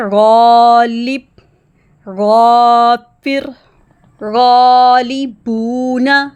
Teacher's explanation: ہم دیکھیں گے غین حروف مستعلیہ میں سے ہے، اس لیے غین کی آواز باری پڑھی جائے گی اور اس کے بعد والا الف بھی موٹا سنائی دے گا